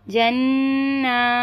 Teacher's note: जीम नून ज़बर जन, पहले नून मुशद्दद का गुन्ना करेंगे फिर नून को खींचेंगे